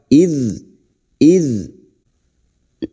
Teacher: Berikutnya huruf dzal, jangan sampai memantul. Huruf dzal bukan qalqalah.